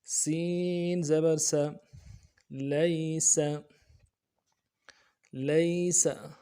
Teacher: سین کی سیٹی باریک ہوگی اور زبر کو نرم سے پڑھیں گے